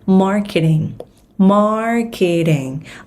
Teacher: Nhấn âm 1 trong từ marketing nha. Tiếng Việt mình đọc là marketing, nhưng mà tiếng Anh nó sẽ là marketing.